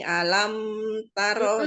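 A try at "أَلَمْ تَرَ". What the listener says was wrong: Alam taro. Namun mim sukunnya jangan terlalu lama ya Bu ya. Karena itu sifatnya idhar syafawi ya. Jadi jelas dibacanya. Alam taro kaifa fa'ala rabbuka bi ashabil fil. Jadi disempurnakan lagi, diperbaiki lagi panjang pendeknya ya Bu ya.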